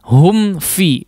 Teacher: diizharkan tapi digunnahkan jangan terlalu lama ya, hanya sekejap saja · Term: mim sukun